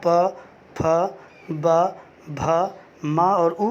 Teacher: जब हम उ बोलते हैं और प से म बोलते हैं तो हमारे दोनों ओठ आपस में लड़ते हैं। बोल के देखिए, प से म प फ ब भ म और उ, तो ओठ लड़ते हैं। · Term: ओष्ठ वर्ण